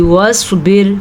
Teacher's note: واصبر سواد کو پر کر کے پڑھنا ہے اور را باریک پڑھنی ہے